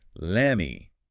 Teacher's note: The T-sound in let often gets dropped or assimilated before the M of me, and the vowel sound in me might weaken slightly. It just flows much more easily as lemmy.